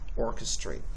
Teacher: Okay, you're going to see this little backward C, and then there's going to be an apostrophe in front of it, letting you know that you are going to place emphasis on the first syllable. And then the lower apostrophe over here means you are going to de-emphasize the last syllable, orchestrate.